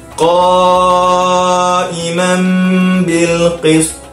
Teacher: Tanwin bertemu dengan huruf ba. Jadi hukumnya iqla', dengungkan. Jadi kita kena dengungkan.